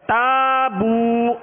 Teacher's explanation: واو مدہ ہے، ہونٹوں کو کامل گول کر کے ایک الف کی مقدار میں اسے بھی کھینچ کر ادا کرنا ہے